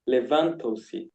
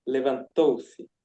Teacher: the emphasis is in the third syllable, so it's levantou-se.